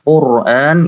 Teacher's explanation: apabila ra itu berharokat sukun dan sebelumnya berharokat dhammah seperti Al-Qur'an, ya. Quran itu dibaca tebal.